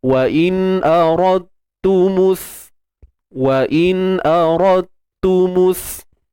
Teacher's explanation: Masukkan huruf dal ke dalam huruf ta secara kamil. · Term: idgham mutajanisain